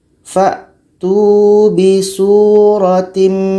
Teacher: Kita masukkan secara sempurna. Tanwin masuk kepada mim. Maknanya hanya terdengar huruf mim saja. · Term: idgham kamil